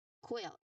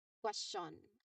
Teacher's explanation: you round your lips for the second part of the sound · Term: Q sound